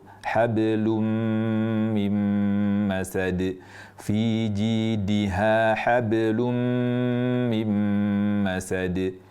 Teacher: Harusnya ringankan suara qalqalah itu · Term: qalqalah sughro